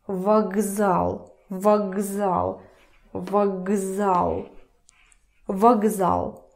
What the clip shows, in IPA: vaGzal